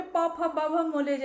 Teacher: हमारे जो दोनों होंठ हैं वो आपस में टच करते हैं।